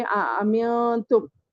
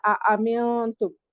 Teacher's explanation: اَأَمِنتُم، حرکت ہے، حمزہ بھی حرکت ہے، میم نون ساکن تنوین اور نون ساکن کا قاعدہ اخفا ہے، جس کے بعد تا آیا ہے نون ساکن کے بعد، تو ہم ناک میں چھپائیں گے۔ اَأَمِنتُم، امنتم نہیں بولیں گے بلکہ اَأَمِنتم۔